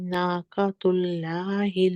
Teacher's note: नाक़तुल्लाहि में लाम जलाला जो है ये थोड़ा लाइट लगा है मुझे इसमें